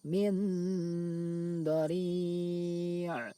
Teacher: suara nun sukun dibaca samar antara izhar dan idgham lalu didengungkan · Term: ikhfa